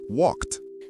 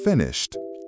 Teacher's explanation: This t sound occurs after voiceless sounds. Voiceless sounds are made without vibrating your vocal cords.